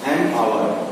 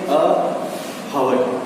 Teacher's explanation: no, H जो है silent हो जाएगा